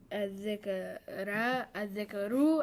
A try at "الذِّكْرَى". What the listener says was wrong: No. You're changing a letter. We can't change a letter. We can only change the sound. Point is, this has the same ending as Musa. When you see an alif ending or alif maqsura ending, it's